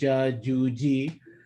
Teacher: When a Jeem is sakin, the tongue is going to be released from the upper palate. So your tongue is touching the upper palate when you're saying a Jeem